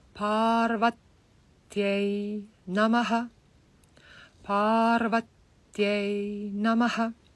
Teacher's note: So you see a long line on the A, makes it A, dirgha A, long A, Parvat. And then you put the tongue on the Ta, because the Ta and the Ya is preceded by a short A, so the Ta becomes a little bit longer